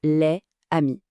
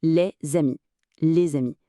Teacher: le S muet va se transformer en un son Z et créer un pont. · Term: la liaison